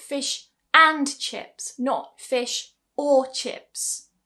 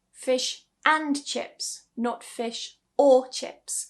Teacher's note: Now I'm giving stress to and or.